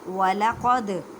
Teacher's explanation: دال ساکن ہے، کلکلا کریں. کلکلا کا مطلب ہے ہلا کر پڑھنا